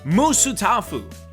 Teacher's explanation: he emphasizes each syllable so it almost sounds like it's three different words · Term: three syllables